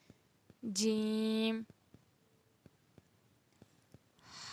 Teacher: زبان کا بیچ جب تالو کے بیچ سے لگے تو ادا ہوتا ہے